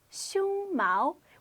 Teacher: It's pronounced 胸毛 with a first tone followed by a second tone.